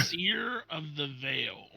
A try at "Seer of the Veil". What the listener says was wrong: Yeah, it's just SEER. There's no ER at the end of that. The Seer of the Veil.